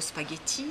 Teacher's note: Spaghetti, en français, il est accentué allongé sur le ti, alors qu'en anglais, il n'y est pas.